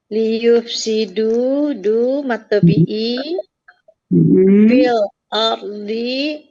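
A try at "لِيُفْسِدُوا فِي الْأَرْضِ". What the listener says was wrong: Ya, betul.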